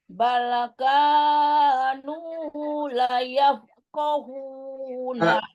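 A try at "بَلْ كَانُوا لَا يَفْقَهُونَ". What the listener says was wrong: Laknya, panjang laknya. La yaf.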